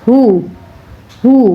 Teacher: پیش کو آپ نے بہت احتیاط سے ادا کرنا ہوتا ہے، اس کی آواز ہاؤ یا ہی میں نہیں جانی چاہیے، اس کی آواز ہو میں ہی ہونی چاہیے۔ ہا پیش ہو، شین زیر شی، ہو شی، ہو شی۔